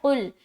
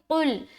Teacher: قاف کو بالکل حلق سے نکالنا ہے